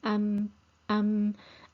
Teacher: the sound is blocked at the lips because the lips must remain closed when we pronounce the meme